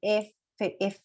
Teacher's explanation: La F, mira, F, F. Sí, me choca mi labio, pero con mi diente.